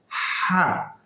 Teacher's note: হলকের মধ্যম স্থান থেকে, হলকের মাঝখান থেকে উচ্চারণ হবে হা। আগে বাতাস পরে আওয়াজ।